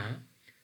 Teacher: mean the airway is blocked somewhere in our um oral cavity and the air is coming out through our nostrils then ma is a nasal sound